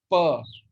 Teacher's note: For example, if I say pa or ta, in both the things, I have a plosive like pa. Pa is a plosive because my lips are closing and then opening.